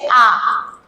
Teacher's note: প্রসারিত হয়ে মুখটা কিন্তু খুলে যাচ্ছে আ, তাই এটা হচ্ছে বিবৃত